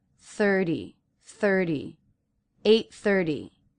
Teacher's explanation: the T in the word 30 is being pronounced as a flap T because it comes after an R and before a vowel